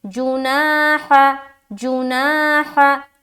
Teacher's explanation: जीम को नहीं खींचेंगे, हा को भी नहीं खींचेंगे, खींचना किसे है, नून को, ना बीच में खींचना है। तो जीम पेश जू, नून अलिफ ज़बर ना, हा ज़बर हा, जुनाह। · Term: अलिफ मद्दा